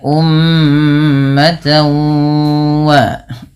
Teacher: Kemudian cara membacanya disertai dengan bacaan ghunah. yang mana cara membacanya adalah memasukkan bunyi tanwinnya kepada huruf wau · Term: idgham